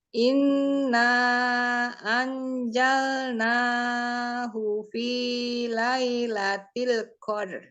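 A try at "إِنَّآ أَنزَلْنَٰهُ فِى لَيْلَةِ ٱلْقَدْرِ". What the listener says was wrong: Huruf zai ada tambahan suara. Anzalna. Jadi kalau dia jal itu nanti kayak huruf jim. Anzalna kayak huruf Z. Coba pizza.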